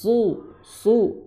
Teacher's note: suara desiran ya dari gigi bawah itu disertai dengan ketebalan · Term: shad